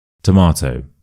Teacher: So, the schwa is at the start. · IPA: /ə/